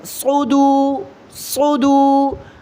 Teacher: فی صدو، صاد کو موٹا کریں،